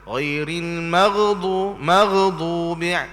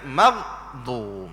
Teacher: kita kena sebut dengan bersungguh mematikan huruf ghain itu. Jangan beri jadi hidup.